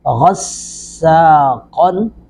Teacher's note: غین زبر سین غص، سین زبر الف سا، غصا، قاف دو زبر قن، غصاقن، غین کو بھی پر کریں گے، سین پر سیٹی کی آواز آئے گی، قاف کو پر کر کے پڑھیں گے